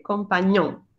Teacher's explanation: Tenemos la ñ y luego la O nasal